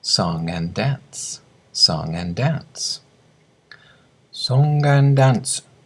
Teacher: the G of song links to the A and the two D's become one